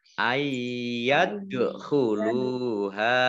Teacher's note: dal sukun bacaan qalqalah dibaca memantul ya ditampakkan memantulnya